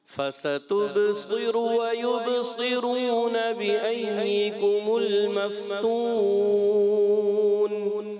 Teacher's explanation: تُب بھی موٹا نہیں. فَسَتُب باریک رکھنا ہے. پھر آپ نے صاد اور را کو موٹا کرنا ہے